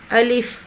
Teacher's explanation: اور یہ جو لام ہے نا، یہ اوپر والے سامنے والے دانتوں کے جڑ کے ساتھ زبان کو لگا کر آرام سے ادا ہوتا ہے باریک آواز میں